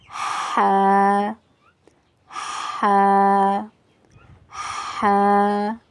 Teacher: حا جو ہے وہ حلق کے درمیانی حصے سے ادا کیا جاتا ہے۔ حلق کے درمیانی حصے سے حا ادا ہوتا ہے۔